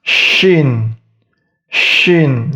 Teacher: Huruf Shin atau Sha itu tengah lidahnya diangkat itu mendekati langit-langit juga. Shin. Tapi di bagian agak ke depan.